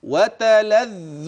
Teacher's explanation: الذال بإخراج طرف اللسان أولا، ثانيا هي مشددة فانتبه لنطق المشدد